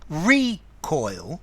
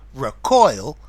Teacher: The recoil as a noun. Notice the recoil, stress on the first syllable. To recoil, stress on the second syllable.